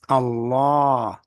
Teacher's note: the Arabs were pronouncing it as Allah with a double beat